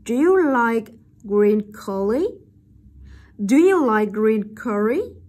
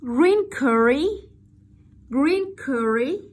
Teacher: Rising intonation, bởi vì là ở đây nó là câu hỏi không có từ để hỏi.